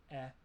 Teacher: this sound is a mid-front unrounded vowel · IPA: ɛ